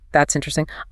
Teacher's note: If I say it with a sweeping, rising, falling tone, that's interesting. I am signaling genuine engagement and curiosity.